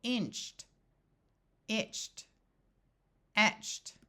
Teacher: Ed also has the sound of T after the ch sound, whether it's with a CH or spelled with a TCH.